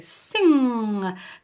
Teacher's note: that kind of arching muscle at the back of your mouth is your soft palate or velum and the back of your tongue as you're going to say sing comes up and meets it